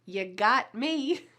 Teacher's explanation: Ya, which is a reduced version of the word you